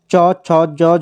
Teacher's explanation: च, छ, ज, झ बोलोगे तो ये तालव्य हैं, जीभ आपकी तालू को स्पर्श करती है।